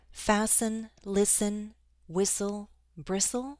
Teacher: there are some words in which the T sound is always dropped.